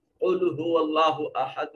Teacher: قل هو اللہ احد میں قاف موٹا اور پر کر کے پڑھا جائے گا، صفت استعلاء کے ساتھ پڑھا جائے گا